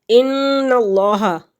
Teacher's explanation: نون مشدد ہے، اور نون مشدد ہے اس لیے اس پہ غنہ ہوگا۔ ان اللہ، اللہ کے لام سے پہلے لفظ کے اوپر زبر یا پیش ہو تو اس کو پر پڑھیں گے۔